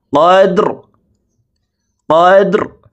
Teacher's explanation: এখানে দাল কলকলার হরফ নিচের দিকে ধাবিত করে ধাক্কা দিয়ে উচ্চারণ করতে হবে।